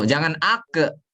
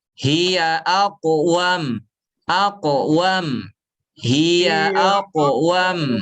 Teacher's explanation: pantulan huruf qaf, pantulannya tebal. Aku, jangan ake, tapi aku, wam, hiya aqwam, hiya aqwam.